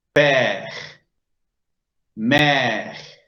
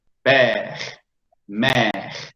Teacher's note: Para indicar que, repito, la E se debe pronunciar, la E es algo abierta y dura más tiempo. Debemos destinar más tiempo para la pronunciación de esa E.